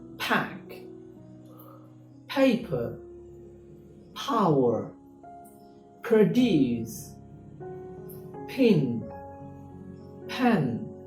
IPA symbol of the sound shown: p